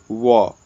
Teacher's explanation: दंतोष्ठ से बोले जाते हैं